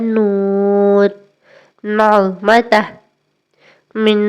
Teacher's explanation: یہ حرف پڑھتے وقت آواز میں ہلکی سی ناک کی گونج محسوس ہوتی ہے۔ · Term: نون